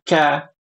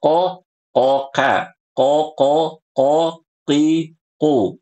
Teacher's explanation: Kalau qof adalah pangkal lidah nempel ke langit-langit yang lunak. Sedangkan huruf kaf pangkal lidah nempel ke langit-langit yang ke keras.